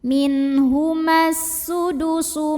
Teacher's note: Kemudian alif lamnya namanya alif lam syamsiyah. Karena ada alif lam yang ketemu sama huruf syamsiyah yaitu sin, maka alif lamnya tidak perlu dibaca.